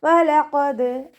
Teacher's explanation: പല്ല് ചുണ്ടിൽ തട്ടാത്ത രൂപത്തിൽ വട്ടത്തിൽ പിടിച്ചിട്ട് ഉച്ചരിക്കുക. ഖാഫ് ഇസ്തിഅലാൻ്റെ ലെറ്ററാണ്, ഉയർത്തി ഉച്ചരിക്കേണ്ട 7 അക്ഷരങ്ങളിൽ പെട്ടതാണ്. തഫ്വീം ചെയ്യുക. ദാല് കൽക്കല ലെറ്റർ ആയതുകൊണ്ട് ഫുൾ സുക്കൂന് കൊടുക്കാൻ ശ്രദ്ധിക്കുക കേട്ടോ.